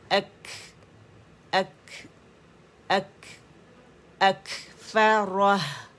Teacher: कुतिलल इंसानु मा अक हम्स अक काफ के पास से, काफ का मखरज कहाँ है, जब ज़बान की जड़ हमारी उठती है, ठीक है, और हमारे सख्त तालु से लगती है, वहाँ जब लग जाती है ना, जब आप कहते हैं ना अक, आवाज़ बंद हो जाती है सुकून के ऊपर, क्योंकि उसमें शिद्दा है, सख्ती से आवाज़ ठहर गई, कुव्वत के साथ ठहर गई, बंद हो गई, एयर प्रेशर बढ़ गया, आवाज़ और हवा दोनों आवाज़ भी हवा में बदल जाएगी।